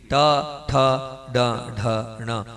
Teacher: पूरे समय जीभ पीछे रहना चाहिए, आपकी जीभ पीछे नहीं रहती है। टा ठा डा ढा णा जहाँ बोलते हैं उस स्थान पर अपनी जीभ को पीछे घुमाकर टच करना है